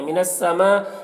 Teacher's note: مد متصل ہے سے 3 4 الف کے برابر کھینچیں گے